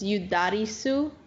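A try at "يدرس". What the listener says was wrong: Yudarisu, if you fully valid, but notice I don't put a vowel in the seam. Yudaris, Yudaris is beautiful.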